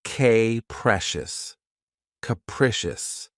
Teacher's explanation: This word has three syllables and the stress is on the second syllable. Keep in mind that the first syllable has that schwa sound krecious.